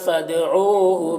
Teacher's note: حسنہ، نون میں کھڑا زبر ہے، الف مدہ کی طرح ہوتا ہے، یا میں کوئی حرکت نہیں، یا کو نہیں پڑھیں گا۔ فدعوہ، دال میں قلقلہ ہوگا، او میں واؤ مدہ ہے، بہا میں الف مدہ ہے، تو اس طرح سے پڑھیں گے۔